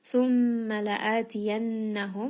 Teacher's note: mim is going to have a shadda. Uh so, we [snorts] are going to rest on this for just a little bit and give it some ghunna. La'atiyannahum, nun has a shadda here as well.